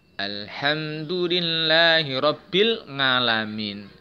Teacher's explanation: ada yang membaca Ain itu tidak dengan menyempitkan tenggorokan